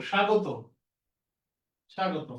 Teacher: শব্দের শুরুতে বফলা থাকলে তাহলে বের উচ্চারণটা হবে না